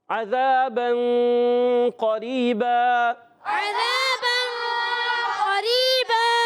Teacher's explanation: یہاں وقف کریں گے، قریباً سے قریبا ہو جائے گا، اور ملائیں گے تو قریباً یوم ہو جائے گا